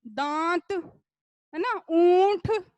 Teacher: इसमें मुख और नाक दोनों से ध्वनि उच्चारित की जा रही है। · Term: अनुनासिक